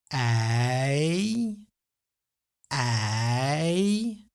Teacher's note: you might notice the position of your mouth shifting slowly from open to a bit more closed. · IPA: [ɛi]